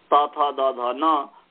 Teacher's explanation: त थ द ध न का दांत स्थान है